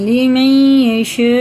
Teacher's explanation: یا پہ شد ہے تو یہ ادغامی یا ہے، یہ غنہ کر کے پڑھیں گے